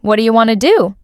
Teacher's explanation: That's one chunk. They're not pausing between each word. The rhythm is smooth.